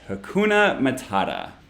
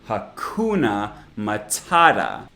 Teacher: i used the flap for the t sound in hakuna matata because we don't actually say hakuna